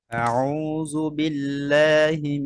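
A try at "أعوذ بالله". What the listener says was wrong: ডাল দিয়ে আউযু জু এরকম চলে আসে। আউযু আউযু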